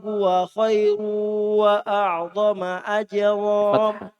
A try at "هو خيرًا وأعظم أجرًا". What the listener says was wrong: خيرا وأعظم أجرا di fathah. Kalau tidak kuat ulang di tajiduhu indallahi huwa khairan wa a'zama ajra.